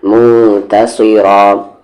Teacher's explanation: صاد پر زیر سی، موتصی، را کے ساتھ الف را، موتصیرا، تا یہ لائٹ ہے لیکن صاد اور را یہاں پر ہیوی ہے